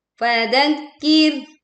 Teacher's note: Waalhat pada ayat ke-21, akkir press kaf tasydid kemudian ro sukun kita membuat bunyinya tipis karena didahului oleh huruf dengan kasrah harakat · tekan kaf bertasydid, lalu ro sukun, kita mengeluarkan suaranya dengan tipis karena didahului huruf berharokat kasrah.